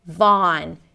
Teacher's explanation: a V sound, ah as in father, or you can even round the lips a little bit, and then an N